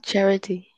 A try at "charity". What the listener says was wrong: Very good. So this is the CH sound. Yeah, correct. Very good.